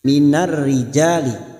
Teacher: huruf jim fathah diikuti alif, 2 harokat kita panjangkan